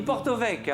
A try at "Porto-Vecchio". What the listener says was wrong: On dit pas Porto Vecchio, on enlève les O.